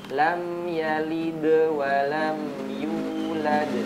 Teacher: perhatikan huruf dalnya dia bertanda sukun dipantulkan